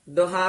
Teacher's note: ਦੁਹਾ ਛੇਤੀ ਉਚਾਰਨ ਕਰਨਾ ਦੋਹਾ ਨਹੀਂ ਕਹਿਣਾ ਹੋੜੇ ਨਾਲ